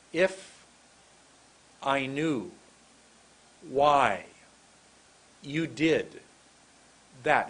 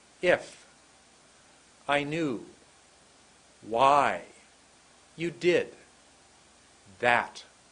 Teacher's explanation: the first word is very much shorter the second word is much longer